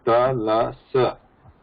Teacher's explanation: La, compared to ta, there is degree of touch is lesser.